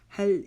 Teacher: हल, इसी तरह इसको हल नहीं पढ़ेंगे, लाम की जज़म के ऊपर कलकला नहीं करेंगे। हल मुरसल, जल्दी से इसको पढ़ लेंगे।